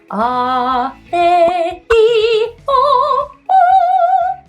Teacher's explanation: So we have our vowels. They are certainly voiced. There are vocal cord vibrations going on.